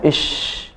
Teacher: Jadi nafasnya menyebar dalam mulut, menyebar dan kemudian mengalir. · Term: shin